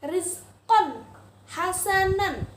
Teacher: Benar, tanwin bertemu dengan huruf h. Harus dibaca dengan jelas, terang, tidak boleh berdengung. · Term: izhar halqi